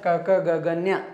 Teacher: ಕಂಠ್ಯ ಅಂದ್ರೆ ಇವು ಕುತ್ತಿಗೆ ಭಾಗದಲ್ಲಿ ಹುಟ್ಟತಕ್ಕಂತವು